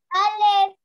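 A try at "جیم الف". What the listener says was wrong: जी पहले जीम लिखा है ना, तो पहले जीम बोलेंगे, जो पहले होगा उसको पहले बोलते हैं। जीम अलिफ।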